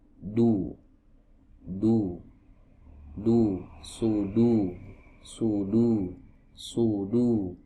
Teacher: Ya, huruf dal. Ya, huruf dal ini huruf yang keluar dari ujung lidah, ya, bertemu dengan pangkal gigi seri bagian atas